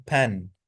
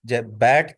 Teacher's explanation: बलेबियल जो साउंड है that is produce with both लिब्स। दोनों लिप्स का यूज़ करके यह साउंड प्रोड्यूस होती है।